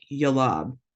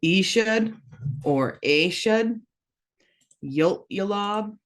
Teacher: zoom in a little bit that this L has that apostrophe that's a glottalized l so you're going to kind of stop when you're saying that